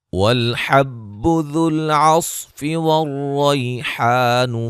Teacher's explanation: والحب ذو العصف والریحان فبأي آلاء ربكما تكذبان، حا کو واضح کریں گے، ذال کو نرم ادا کرنا ہے، صاد کو موٹا ادا کرنا ہے، را کو موٹا ادا کرنا ہے، یا لین ہے، الف مدہ ہے، یہاں مد واجب ہے، ٹھیک ہے، اور یہ مد اصلی ہے، الف مدہ ہے، الف مدہ ہے۔